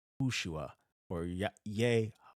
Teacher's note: So it would be Yahoshua, which at that point, when you have that many syllables in Hebrew, this rendering here gets changed. The emphasis would be on the shu part